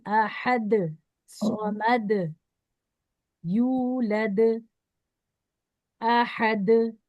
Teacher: आखिरी में दाल आ रहा है जिसपे हम रोक रहे हैं आवाज को, इसको हिलाना है